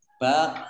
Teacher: qaf sukun bacaan kolkolah, ya. Bacaan kolkolah dibaca memantul